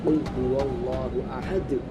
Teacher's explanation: itu dibaca geram, itu huruf qalqalah kubro